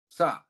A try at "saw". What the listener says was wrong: Not sa. Not sa. Saw. There's a W here.